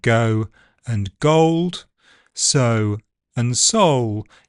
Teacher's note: you can hear a more back starting position in the words ending with O · It changes to o before dark L